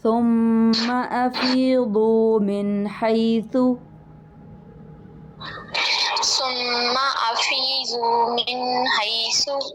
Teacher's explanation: میم کے اوپر شد ہے ثم میں تو یہاں پر خالی غنہ ہوگا